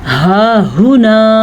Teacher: ये जो ज़बर है या ये पेश है या ये मीम है, ज़ेर है, इनको किसी सूरत में भी लंबा नहीं करते। हा हुना, अब हमने पहले हा को लंबा किया क्योंकि हा के ऊपर खड़ी ज़बर थी। दूसरे हा को हम लंबा नहीं कर सकते क्योंकि हा के ऊपर सीधा पेश है।